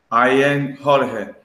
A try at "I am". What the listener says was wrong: Ojo, ahora suena como si fuera una N. I am. Los labios se tienen que tocar.